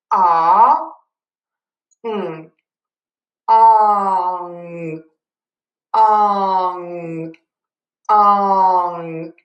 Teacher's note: we're just going to move slightly from that ah to the ng. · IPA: /ɔŋ/